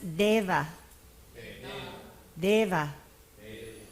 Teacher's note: DEA is non aspirate Dental da